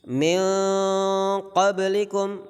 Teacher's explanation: suara kita dikeluarkan dari khayshum, dari rongga hidung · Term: ikhfa